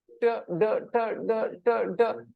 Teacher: you will hear some vibration here on your throat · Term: voiced